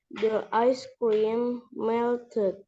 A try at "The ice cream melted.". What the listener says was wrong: Yes, the ice cream melted. Okay, or melted.